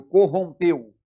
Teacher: No segundo caso, corrompeu, o E tem som de E, é fechado.